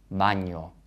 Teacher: the air is going through the nose it's a nasal consonant